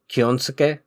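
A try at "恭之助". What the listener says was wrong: Kyonosuke. There's no, you don't put, a, accent on any of the syllables. It's pretty flat.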